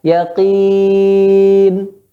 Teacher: gunnahnya tingkatan yang ketiga yaitu naqis